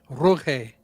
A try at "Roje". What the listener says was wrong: Yep, it's pronounced Rohe. Roje. The G is pronounced like an H.